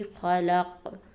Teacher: دوسرا قاعدہ اس پہ یہ ہے، اور اس میں بھی آیت کے آخر میں حروف قلقلہ میں سے حروف آ رہا ہے، اس لیے اس کی آواز اپنی طرف واپس لوٹے گی